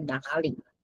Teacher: because it's two third tones, 哪 turns into second tone